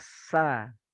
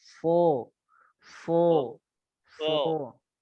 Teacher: kalau sin itu melebar sa. Senyum dia sa. Nah, kalau so enggak, dia biasa aja mulutnya, bibirnya juga biasa aja.